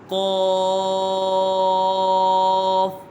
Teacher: اس کا مخرج ہے زبان کی جڑ اور تالو کے نرم حصے سے ادا ہوتا ہے۔ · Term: حرف لہویہ